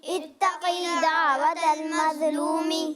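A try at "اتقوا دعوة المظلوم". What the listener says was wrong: اتقی نہیں پڑھیں گے، کھینچیں گے نہیں.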